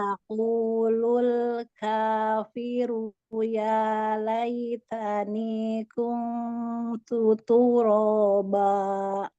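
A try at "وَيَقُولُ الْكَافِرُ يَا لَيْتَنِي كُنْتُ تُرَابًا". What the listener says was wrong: Ya, bagus. Lanjut.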